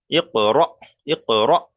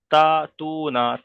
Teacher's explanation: তাহলে যখন হামজা সাকিন হবে, হামজা সাকিনকে একটু ধাক্কা কিংবা ঝটকা দিয়ে পড়তে হবে। · তারপরে র হামজা জাবার, র হামজা জাবার র, র ইক র, এই যে র বলছে, এই র কিন্তু ঝটকা হচ্ছে, অর্থাৎ মানে একটা প্রেসার দিয়ে পড়ছি।